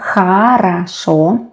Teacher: We pronounce а-а because they are not stressed. That is why not о-о, but а-а.